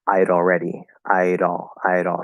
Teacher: So we're going to flap that D, connect it to the all.